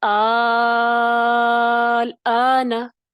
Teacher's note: مد لازم کے ساتھ 6 حرکت تک کھینچ کے